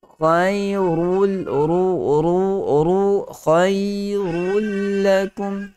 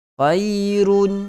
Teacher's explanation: Tanwin bertemu dengan lam adalah idgham bila gunnah. Rul masuk dalam lam terus. Okey. Tidak lagi bunyi tanwin. Khairun, salah.